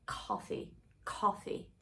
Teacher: one so it's a short r sound and that means that your tongue is really low and back and you have to drop the jaw in that position so it's gonna be coffee coffee um the lips they're not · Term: short O sound